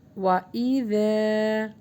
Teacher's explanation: یہاں پہ ذال کو سافٹ پڑھیں گے اور الف مدہ کے ساتھ ہے تو لانگ کریں گے واو پر ہونٹوں کو گول کریں گے وَإِذَا یہاں پر حمزہ